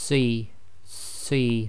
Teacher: this as c c so you're' making a full mouth I.E your mouth is almost round your lips are just about making a round circle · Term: proper full mouth